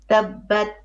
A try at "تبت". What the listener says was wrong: I cannot hear your ta. I think you're holding it.